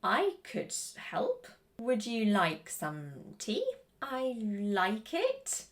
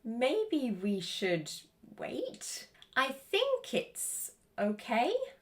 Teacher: you can hear the intonation falling before it rises again at the end of the sentence